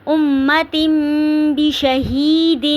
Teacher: تنوین کو میم میں بدل دینا ہے، امتن نہیں پڑھنا